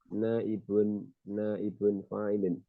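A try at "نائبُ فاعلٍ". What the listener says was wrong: Naibu fa'ilin mudhaf dia, tidak ditanwin. Naibu fa'ilin.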